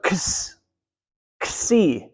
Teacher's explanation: So you actually take a K and an S and you stick them together.